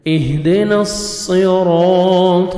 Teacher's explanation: کو موٹا کر کے پڑھیں گے، نص، را کو مرزبر ہے، را کو آپ نے موٹا کر کے پڑھنا ہے